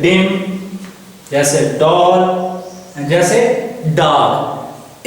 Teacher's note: इन दोनों साउंड्स को प्रोड्यूस करने के लिए हमने अपनी जुबान की टिप और बैक ऑफ रिच को यूज करना है